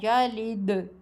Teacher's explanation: اس میں دال ساکن پر صاف آواز گونجتی ہے، یلد۔ بس ان 5 حروف پر جب بھی جزم آئے تو انہیں بغیر ہلائے مت چھوڑیں بلکہ ہلکا سا اچھال دیں۔ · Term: قلقلہ